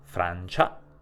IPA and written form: Frant͡ʃa (FranCIA)